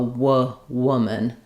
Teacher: in woman, the second vowel is pretty much gone. If it's any vowel, it's going to be a little schwa sound like an W is like the same as in would.